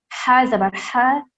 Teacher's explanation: حلق کے درمیانی حصے سے ادا کرنا ہے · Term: بڑی ح